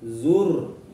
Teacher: Kemudian di ayat kedua hatta, ya, hatta taknya panjang dua harokat, sama juga contoh dari mad asli atau mad tabi'i. Zur, ra-nya tebal karena jatuh setelah harokat dhammah